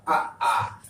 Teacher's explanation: इनका उच्चारण कंठ या गले से होता है